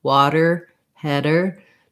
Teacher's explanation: A flap, water, header, no pressure builds up. My voice is on and I'm just lifting the tongue in the spot for the T and the D.